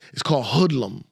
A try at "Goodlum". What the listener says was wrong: You said hoodlum. Goodlum with a G.